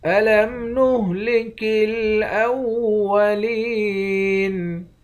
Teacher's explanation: لام کو یا کے ساتھ ملا کر یا کو ایک الف کی مقدار کھینچیں گے۔ یا حروف مدہ ہے، آخر میں نون ساکن ہے۔